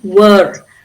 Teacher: Can you see the R at the end because the next word is a vowel.